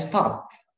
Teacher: in stop, it's no puff of air, it's just like we hold something.